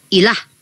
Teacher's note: Kami baca dengan tidak ditafkim, ditarkik, ditipiskan ilah.